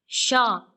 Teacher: श के उच्चारण में जिह्वा तालु को स्पर्श करती है। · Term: तालव्य श